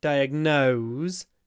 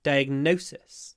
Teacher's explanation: in diagnose we have a full vowel no nose but in diagnosis we have a clipped vowel because we pronounce a s so diagnose has a z diagnosis has a s no diagnose